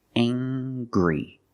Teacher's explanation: We use the nasal sound, plus the hard G.